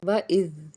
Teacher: زبان کا ایک چھوٹا سا حصہ ہمارے دونوں دانت اوپر نیچے کے دونوں دانتوں کے درمیان میں آتا ہے، تب اِذ ادا ہوگا۔ اور اگر اس کو ہم سیٹی کی آواز میں لے آئیں گے تو پھر یہ زا بن جائے گا۔ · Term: زال